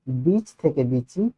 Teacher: এটা ঘোষ এটা ঘোষ বর্ণ তো এখানে দেখো এটা হয়েছে অঘোষ ছিল ঘোষ হয়ে গেছে অঘোষ